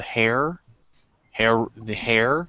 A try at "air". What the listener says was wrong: It's the air. It's like the H is silent, just like herbs.